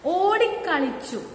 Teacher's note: ഈ അതിനെ പിരിച്ചെഴുതുന്ന സമയത്തോ ഓടി അധികം കളിച്ചു അല്ലെ. അപ്പോ ആ ക എന്നത് ഒറ്റപ്പദമായി മാറുമ്പോ ഓടിക്ക എന്ന ഒരു ഇരട്ടിപ്പ് അവിടെ വരുന്നുണ്ട്